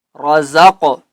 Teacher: وَمِمَّا رَزَقْنَاهُمْ، را کو ہم نے پر پڑھنا ہے، زا کو قاف کے ساتھ ملانا ہے تو ہم نے کرنا ہے قلقلہ